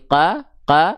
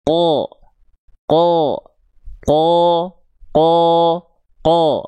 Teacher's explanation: Huruf yang dia karakternya tebal ketika berharakat fathah terdengar tidak akan vokal A, tapi dia akan terdengar seperti seolah vokal O. Qo qo nah terdengarnya seperti vokal O.